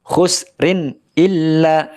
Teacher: karena tanwin diikuti huruf alif maka dibaca izhar dibaca jelas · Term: idhar